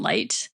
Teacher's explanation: We have the I and the Ow. And so before voiceless sounds like T in light, we raise the vowel slightly. So it becomes small cap I as opposed to I. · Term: Canadian raising